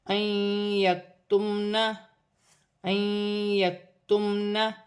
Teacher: الف مدہ بھی بن رہی ہے، لام مشدد ہے، نون مشدد میں غنہ ہوگا۔ نون ساکن کے بعد یا مشدد آ رہی ہے، یا مشدد حروف یرملون میں سے ہے، نون ساکن میں غنہ بھی ہوگا، ملا کر بھی پڑھا جائے گا۔